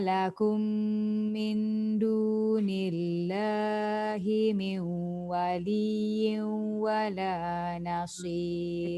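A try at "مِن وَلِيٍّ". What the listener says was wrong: Dekat waliyyin tu pun dengung juga. Min waliyyin wala nasir.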